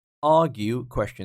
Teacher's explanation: Argue, question. So the stress is on the first syllable.